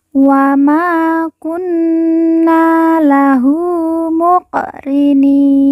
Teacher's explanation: Nun di ujung kita sukunkan atau kita matikan karena wakaf atau berhenti